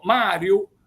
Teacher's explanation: mariu si pronunzia la M normale scempia una sola m